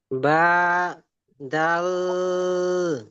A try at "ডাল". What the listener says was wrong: আবার দাল হয়ে যাচ্ছে, ডাল। বলেন ডাল। সব- জি না, সকলে মিউট অবস্থায় বলেন ডাল। দয়তে টান দেন, শেষে ল উচ্চারণ করেন, মিউট অবস্থায়।